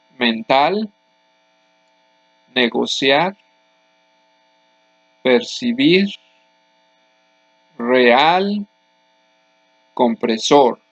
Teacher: Other examples are mental, negociar, percibir, real, compresor. All these words have the last syllable as the loudest syllable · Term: aguda